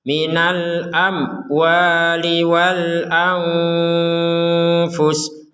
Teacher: Ada mim sukun bertemu waw, kita harus baca dengan jelas.